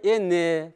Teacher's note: А нужно говорить «энне», потому что вот, смотрите, редуцированный гласный.